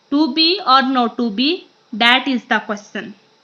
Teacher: this is a regular iambic pentameter line except from one extra unstressed syllable at the end